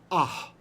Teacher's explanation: it means you actually pronounce the h at the end ah it's aspirated that's not a doggesh and we call it a mapique anything